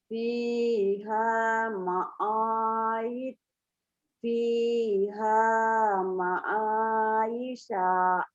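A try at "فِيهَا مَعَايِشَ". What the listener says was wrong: Soalnya pendek ya Bu ya. Jangan dipanjangin ya Bu. Isya, sin gede ya Bu ya. Fiha ma'ayisya.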